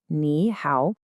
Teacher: when you have 2 of those third tones back to back, the first one just flips and becomes a rising second tone. So ni hao actually sounds like ni hao. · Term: third tone sandhi